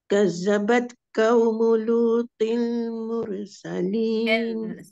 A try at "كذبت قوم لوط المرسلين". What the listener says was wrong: Yang pertama Zal lipiskan, qaw tebalkan.